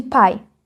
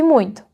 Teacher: O sétimo modo são as aproximantes. A boca se aproxima de uma posição fechada, mas sem fechar de vez e sem criar fricção. O resultado é um som muito suave, quase uma vogal.